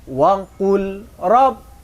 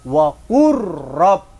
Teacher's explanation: Maksudnya huruf lam itu dimasukkan kepada ro. Lam, suara lamnya tidak dibaca karena idgham. · Nah, di situ ada lam sukun. Tidak boleh dibaca wa qul rabb, tapi langsung wa qur rabb. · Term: idgham mutaqariban